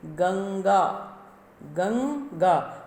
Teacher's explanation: नासिका से आप देखो ऊपर से नाक में से आवाज़ आती है ना। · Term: अनुस्वार